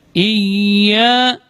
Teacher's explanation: huruf ya juga keluar dari tengah-tengah lidah